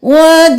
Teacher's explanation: वजीअम, वा जीम ज़ेर या मद जी, इस अलिफ को नहीं पढ़ेंगे, जीम ज़ेर के साथ या को मिलाएंगे 5 अलिफ के बराबर खींचते हुए, जी नहीं करेंगे, जी।